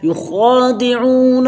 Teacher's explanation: خا کو پر کریں گے، ایک الف کے برابر مد کریں گے، عین کو حروف حلقی میں سے اس کو عین حلق سے ادا کریں گے ، عون ایک الف کے برابر کھینچیں گے، مد کریں ایک